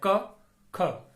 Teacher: इनके उच्चारण में स्वर तंत्रियां झंकृत नहीं होती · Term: अघोष व्यंजन वर्ण